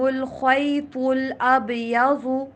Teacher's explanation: خا، تو، ضاد تینوں کو موٹا کر کے پڑھیں گے